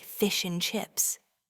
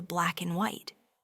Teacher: the D sound in and disappears, particularly when it's situated between two consonant sounds. So, the classic British phrase fish and chips almost universally sounds like fish and chips or black and white transforms into black and white. · So, the classic British phrase fish and chips almost universally sounds like fish and chips or black and white transforms into black and white. We hear this reduction of and to simply n or a very soft un constantly in everyday conversation.